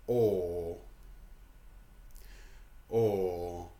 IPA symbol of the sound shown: ɔː